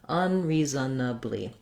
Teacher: For unreasonably, you can say it with that schwa, and that would be 5 syllables.